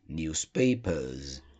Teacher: Se tiver o som de vogal, por exemplo, a palavra newspaper terminou com o som de A. Então vai ter o som de Z.